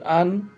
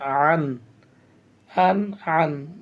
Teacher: এরপরে হামজা দুই জবর আন আইন দুই জবর আন আন আন হামজাটা মুখে উচ্চারিত হবে আর আইনটাকে কন্ঠনালি চেপে উচ্চারিত করতে হবে